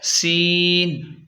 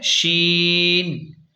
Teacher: سین میں ہوا سیدھی نکلتی ہے اور شین میں ہوا یعنی آواز پھیلتی ہے